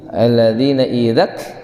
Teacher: huruf kafnya mengeluarkan nafas, desis, hamas ya